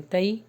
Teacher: حرف لین، تئی، جلدی پڑھیں گے